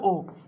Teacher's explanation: উচ্চ মধ্য পশ্চাৎ স্বরধ্বনি হচ্ছে ও